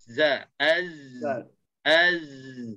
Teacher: kita akan perasan kedudukan hujung lidah bahagian depan dia sentuh gigi bawah